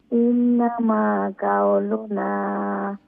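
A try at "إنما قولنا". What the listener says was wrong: কাফ এটা একটু strong করে, কাউলুনা।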